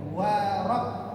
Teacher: Di sini perhatikan huruf waw ketemu dengan ra. Waw ini kan tipis, ra-nya tebal karena harokatnya fathah. Wa-nya jangan terpengaruh sehingga menjadi tebal.